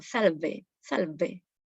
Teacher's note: El italiano hace la V como una labio dental. Dientes de arriba, labios de abajo.